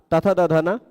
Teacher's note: उच्चारण स्थान दंत आभ्यंतर प्रयत्न स्पृष्ट है ना